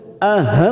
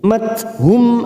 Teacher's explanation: mim sukun bertemu hamzah idhar safawi, kita baca jelas tanpa mendengung